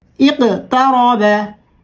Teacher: অর্থাৎ এই 5টি হরফের যে কোনো একটি হরফের উপর সাকিন হলে কলকলা করে তথা প্রতিধ্বনি আকারে বা ধাক্কা দিয়ে পড়তে হয়।